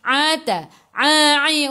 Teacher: daripada kerongkong bukan daripada hidung